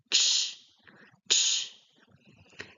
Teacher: we have on the middle and the point of the tongue touching the upper palate, the middle, the palate. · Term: ch sound